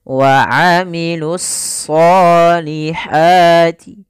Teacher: Yaitu alif lam yang dia ditulis tapi tidak dibaca sehingga langsung kepada huruf shad. Kemudian pada lafal shad itu kita tebalkan wa amilus solihati, ya, ditebalkan huruf shadnya.